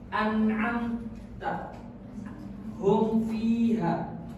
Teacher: mim mati dibaca jelas dan tegas tanpa dengung yang berlebihan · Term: izhar syafawi